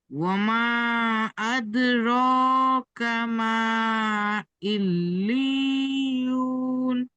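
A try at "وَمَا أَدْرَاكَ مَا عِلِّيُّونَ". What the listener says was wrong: এই লি বলে টান দিচ্ছেন, ইয়া মাদ্দার মতো টান হবে না, তাজদিদ যুক্ত হলে টান হয় না। এই লি, লাম ইয়াজের লি, ইল্লি। না, টান হবে না, সাকিন থাকলে ইয়া মাদ্দা হবে, টান হবে। ইল্লি বলে টান হয়ে যাচ্ছে, ইল্লি, বিনা টানে।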